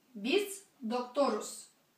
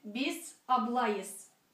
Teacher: обратите внимание еще раз, аффикс сказуемости будет безударный